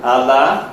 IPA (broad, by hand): ɑlɑ